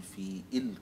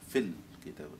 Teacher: لا تنطق الهمزة، الهمزة تحذف في حالة الوصل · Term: همزة الوصل